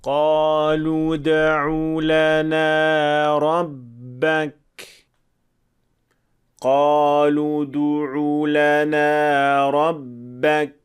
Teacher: when the letter dal is pronounced between two letters with dhamma, the lips should be relaxed without any O formation. But in the wrong version, we see that the lips maintaining their O shape from the previous letter, which means that dal has a hint of dhamma, which is of course a mistake. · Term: qalqalah